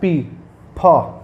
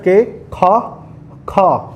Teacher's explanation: you can feel easily a puff sound on your palm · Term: aspirated sounds